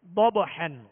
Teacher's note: ضبحن، ضاد حروف مستعلیہ میں سے ہے، پر پڑھیں گے مگر بغیر ہونٹ گول کیے، اور آگے با ساکن ہے، با حروف قلقلہ میں سے، لہذا یہاں قلقلہ ہوگا · یا پر کھڑا زبر الف مدہ کے قائم مقام، ایک الف کی مقدار کھینچیں گے، تا کے نیچے زیر ہے، اور زیر کی ادائیگی کا جو معیار ہے اس کا خیال رکھتے ہوئے ادا کریں گے۔ ضبحن، ضاد حروف مستعلیہ میں سے ہے، پر پڑھیں گے مگر بغیر ہونٹ گول کیے